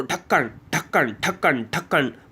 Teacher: इनका उच्चारण करते समय हमारी जीभ हमारे तालु को छूते हुए एक झटके साथ के साथ नीचे की तरफ आती है। · इन वर्णों को द्विस्पष्ट या ताड़न जात व्यंजन कहते हैं। इनका उच्चारण करते समय हमारी जीभ हमारे तालु को छूते हुए एक झटके के साथ नीचे की तरफ आती है। तो आपको जैसे ढा बोलोगे, ढा, आप ढा बोलो, ढक्कन ढक्कन ढक्कन ढक्कन बोल के देखो, एकदम से फट से नीचे आ गई ढक्कन। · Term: उत्क्षिप्त व्यंजन